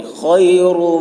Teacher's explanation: خا کی آواز موٹی ہوگی، را پر ہوگی.